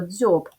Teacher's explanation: наступне слово дзьоб позначимо звуки перший приголосний м'який дз о б дві букви д і з позначають один М'який приголосний ДЗ